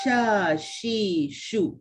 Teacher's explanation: sifat huruf shin ni dia bersifat berdesir. Dia kena ada desiran dia.